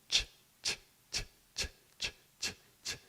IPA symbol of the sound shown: tʃ